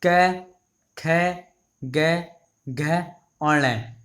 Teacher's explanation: ये हमारे कंठ से बोले जाते हैं